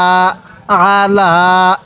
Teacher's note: আইনটা উচ্চারণের সময় গলার মধ্যে চাপ দিব, তাহলে আইনটা সহি উচ্চারণ হবে